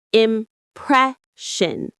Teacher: The stress is on the second syllable, presh.